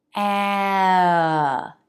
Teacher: The tongue is lifted in the back for a, then relaxes before the N.